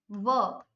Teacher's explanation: इसका उच्चारण जो होता है दो से होता है, दांतों से और ओष्ठ से, दोनों से, तो इसलिए इसको दंतोष्ठ बोला जाता है।